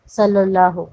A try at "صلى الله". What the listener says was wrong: دیکھو بھائی وہاں پہ تشدید ہے تو اچھے سے پڑھو نا، صلی اللہ.